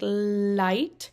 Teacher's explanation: So, like, a good example would be for, like, the L sound for, like, light, where the tongue touches the ridge of your mouth while the sides of the tongue lower the airflow to pass through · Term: lateralization